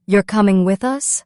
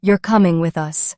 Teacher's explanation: Notice how the voice rises at the end. That rising tone tells you it's a question.